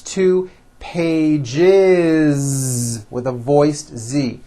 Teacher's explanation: It's not two pages, unvoiced, no. It's two pages with a voiced Z. Even though you spell the word like this, in American English, you pronounce the word like this.